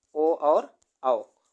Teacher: कंठोष्ठ से यानी कि कंठ से और ओष्ठ दोनों से, कंठ ओष्ठ से, कंठोष्ठ से कौन कौन से शब्द बोले जाते हैं, ओ और औ।